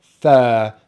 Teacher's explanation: tenth tenth so the first part of this uh number is thur which has a long vowel sound er as in bird